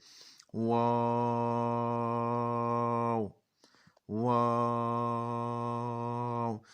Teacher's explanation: वाव को भी लंबा कर सकते हैं होंठों को गोल करके